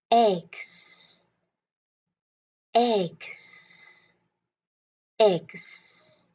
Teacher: Mình sẽ có ba âm E, K, S. Nhưng các bạn làm sao để luyện ba âm này ghép lại thành một âm nha.